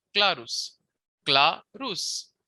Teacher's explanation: the accent is on cla that is the first syllable